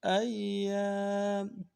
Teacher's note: الف مدہ ہے، ایک الف دار میں کھینچیں گے